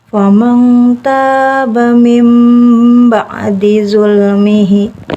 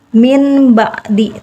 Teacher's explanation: cara membacanya dengan merapatkan bibir atas dengan bawah serta diiringi dengan suara dengung selama kurang lebih 2 ketukan. Mengganti nun mati atau tanwin menjadi huruf mim mati dengan disertai dengungan. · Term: iqlab